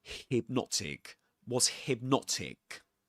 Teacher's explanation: The stressed syllable in the word hypnotic is the second syllable.